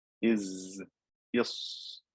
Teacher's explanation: the whisper that is created when i pronounce the three letters sawed seen and sai as a result of air escaping between the gap in the top and bottom teeth the airflow continues if i say is yes and this is